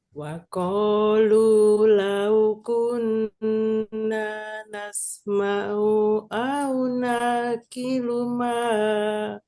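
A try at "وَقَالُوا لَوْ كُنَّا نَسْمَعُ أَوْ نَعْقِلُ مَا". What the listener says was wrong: Nah, hati-hati. U-nya Bunda pendekin ya. U-nya Bunda pendekin. Tinggal mungkin U-nya aja Bunda pendekin. Karena itu ya Bunda ya, huruf ainnya hati-hati jangan sampai dipanjangin.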